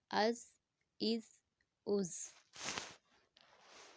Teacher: وسل ساؤنڈ والا لیٹر ہے تو وسل ساؤنڈ کے ساتھ پڑھیں گے، سٹی والا حروف ہے